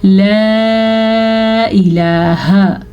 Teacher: اس مد کو آپ نے تقریباً 2 سے 2.5 سیکنڈ تک لمبا کرنا ہے